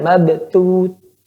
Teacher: perhatikan pada huruf tha, dia memiliki udara yang mengalir. Jangan terlalu dikandaskan.